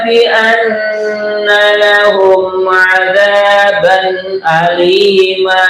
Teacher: lahum mim mati ketemu ain adalah izhar syafawi. Jelas bacanya ya.